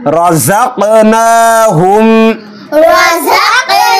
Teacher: ওয়া মিম্মা ওয়া মিম্মা রাযাকনাহুম, এখানে কফ রয়েছে, কফ কলকলার হরফ, কফ পরিষ্কারভাবে উচ্চারণ করতে হবে এবং কলকলা করতে হবে।